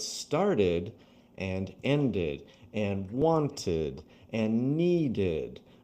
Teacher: All of those verbs that have the original verb ending in a T or D sound, then you're going to have that extra syllable, but none of the others.